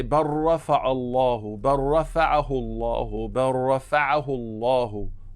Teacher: You make idgham of the lam into the ra.